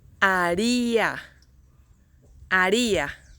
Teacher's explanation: A first, ri second one, a third one. Haría, the stress goes in the second one, second syllable.